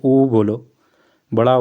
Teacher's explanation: जैसे ऊ बोलो, बड़ा ऊ बोलो, इसमें होंठ गोल हो जाते हैं। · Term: वृत्तमुखी